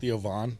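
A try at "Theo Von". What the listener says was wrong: Don't say Van.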